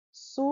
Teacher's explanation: O Su durou mais. Penúltima. Sim, é paroxítona.